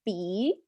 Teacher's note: my jaw is really slow not really open a lot it's barely open the tongue is neutral stays in the front